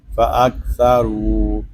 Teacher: فا زبر فا، حمزہ کاف زبر اک، فاک، سا زبر سا، فاک سا، را واو پیش رو، فاکثروا را کو پر پڑھیں گے کیونکہ را کے اوپر پیش ہے، را کو ہم ایک الف تک کھینچ کر پڑھیں گے کیونکہ یہاں پہ الف واو مدہ ہو رہا ہے، آگے جو الف ہے یہ زائد ہے، اس الف کو نہیں پڑھیں گے۔